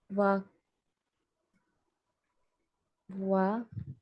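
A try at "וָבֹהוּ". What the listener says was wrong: That is Bet. Va,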